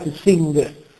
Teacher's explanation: quella G non si deve sentire, ecco, è ormai scomparsa nella pronuncia